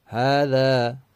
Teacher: زبان کی نوک دانتوں کے کنارے پر آئے گی، اوپر نیچے کے دانتوں کو آپس میں ملنے نہیں دینا ورنہ وہ زا بن جائے گا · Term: ذال